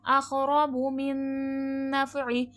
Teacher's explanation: یہاں پر ادغام مع الغنہ ہو رہا ہے، دو لفظ آپس میں ملیں گے غنہ کے ساتھ